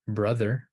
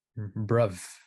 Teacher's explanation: in some dialects the interdentals become labials